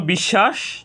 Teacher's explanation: তালব্য স এর সাথে বফলা সংযুক্ত হওয়ার কারণে এখানে তালব্যস এর উচ্চারণ দুইবার হয়েছে